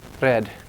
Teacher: there's a trill are in some dialects instead of the glide are